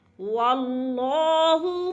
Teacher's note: اللہ کو پر کر کے پڑھیں گے کیونکہ اللہ سے پہلے لفظ واو کے اوپر زبر ہے، اس لیے اللہ پر پڑھا جائے گا۔